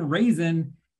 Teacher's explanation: another kind of unstressed oval and technically in raisin there isn't there isn't a vowel sound at all it's just an n sound sort of nasal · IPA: / /